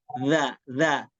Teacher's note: dza juga sama seperti sa dia ujung lidah dengan dua gigi seri atas